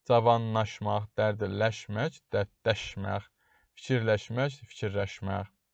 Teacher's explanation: Laş şəkilçisi yenə d, r, n-ya, daş, raş, naş formasında tələffüz edilir.